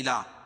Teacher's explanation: کڑا زبر قائم مقام الف مدہ کے، اس کو ایک الف کے برابر کھنچ کے پڑھیں گے